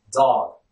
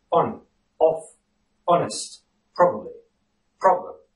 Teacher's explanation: In the received pronunciation, the letter O in all these instances is pronounced as the open back-rounded vowel, O. So, these words are pronounced on, off, honest, probably, problem.